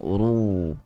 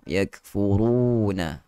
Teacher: Yakfurun, macam mana kita punya cara untuk tebalkan huruf ra itu, kita mesti ada lekukan pada bahagian pertengahan lidah kita